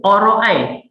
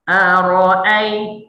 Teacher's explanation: Jadi saya menebalkan huruf hamzah. Hamzah asalnya nipis. Alif atas hamzah atas a, nipis. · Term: lahan khafi